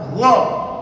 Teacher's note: Gha itu di tenggorokan juga, tepatnya di puncak tenggorokan, sama dengan huruf kha tadi. Dia agak ke bawah.